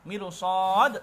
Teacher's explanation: Itu ketika Anda membaca waqaf ataupun wasal, maka ro yang sebelumnya itu ada kasrah, yang sukun tadi, ro sukunnya maksudnya sebelumnya ada kasrah, karena ada huruf shad, maka di situ dibaca dengan tafkhim tebal, tidak boleh dibaca mirsad, tidak boleh, ya.